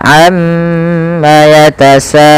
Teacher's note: Untuk mad arid lis sukun kita ngambil yang tengah-tengah saja, teman-teman, yaitu yang 4 harokat. Tidak boleh tidak boleh yang 2 terlalu pendek, yang 6 terlalu panjang.